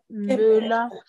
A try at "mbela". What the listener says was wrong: Ce n'est pas mbe. Ce n'est pas mbe. Le ton moins.